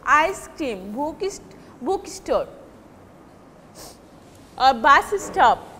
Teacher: stress will be on the first syllable